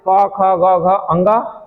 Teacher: जब हम इनका उच्चारण करते हैं तो हवा जो निकलती है हमारे कंठ को छूते हुए निकलती है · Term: कंठ वर्ण